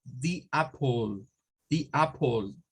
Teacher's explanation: la lengua hacia afuera da una pequeña vibración